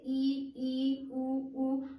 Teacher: इसमें देखा जाए तो लगभग हमारा मुख इसमें बंद ही है। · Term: संवृत